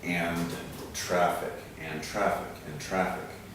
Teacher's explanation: we've got a final d and a beginning or initial t we can combine those a little bit